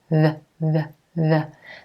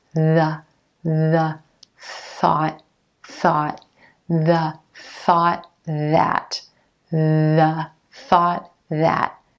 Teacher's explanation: for that TH sound, you want the tip of the tongue lightly touching underneath the top front teeth. The. The key is that the connection between the tongue and teeth is very gentle and the air flows between the tongue and teeth.